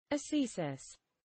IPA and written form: əˈsiːsɪs (ascesis)